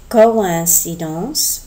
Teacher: We're separating the O and the I instead of the English coincidence, where we're also making that separation, but in English we don't have the tréma.